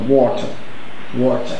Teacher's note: So the vowel here is long or.